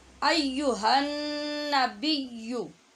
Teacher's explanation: یہاں نون ہے شد والا، لہٰذا غنہ کریں گے. ایھا النبی، بیو کی آواز بھی نہیں ہوگی.